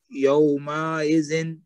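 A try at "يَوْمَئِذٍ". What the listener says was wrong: یہ جو یوم آئزن ہے نا، اس کا بھی میم لمبا کیا آپ نے، یوم آئزن نہیں کہنا، اس کو کہنا یوم آئزن، کیونکہ میم کے اوپر صرف زبر ہے.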